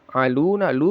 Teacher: lu panjangnya dua harakat mad asli